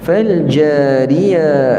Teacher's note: ra itu nipis kerana dia baris bawah